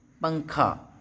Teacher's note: اب آگے انہوں نے یہ لکھا ہے کہ تنوین یا نون ساکن کے بعد حروف اخفا آئے تو نون کی آواز کو ناک میں چھپا کر پڑھنا چاہیے، نوک زبان تالو سے ہٹا کر، جیسے اردو میں پنکھا کے نون کو پڑھتے ہیں۔ اخفا کی مقدار 1 الف ہے۔